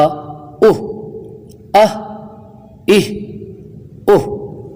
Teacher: ہا انتہائے حلق سے ہے، یعنی جس طرف سے مخارج کا آغاز ہوتا ہے اس طرف سے بالکل ابتدائی حصہ، اور اگر اوپر کی جانب سے دیکھیں تو حلق کا انتہائی حصہ، تو یہ حلق کے سب سے نیچے والے حصے سے ادا ہوتا ہے جو سینے کی طرف ہے، اس کو کہتے ہیں انتہائی حلق، لیکن مخارج میں اس کی ترتیب پہلی ہے۔